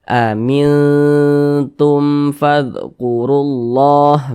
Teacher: digunahkan Jadi maksudnya dengung atau ghunah itu sama saja karena dia didengungkan jadi suaranya itu kita tahan kita panjangkan sejenak amintum di bagian minnya tuh yang yang kita tahan kita panjangkan sejenak